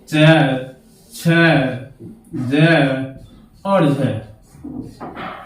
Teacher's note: ये चारों जो वर्ण हैं, चारों जो व्यंजन हैं, इनमें स्पर्श भी होता है और संघर्ष भी होता है, इसलिए इन्हें स्पर्श संघर्षी व्यंजन कहा जाता है।